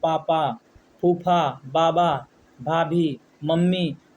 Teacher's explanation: ये सब वर्ड उच्चरित करते समय आपका जो है दोनों होठ आपस में स्पर्श करते हैं। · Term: पवर्ग